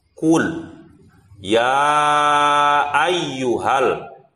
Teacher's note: Jadi ya dibacanya itu ada 5 ketukan.